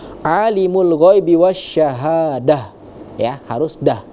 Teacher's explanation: ketika ujungnya itu adalah huruf tak marbuto, maka dia menjadi ha yang tebal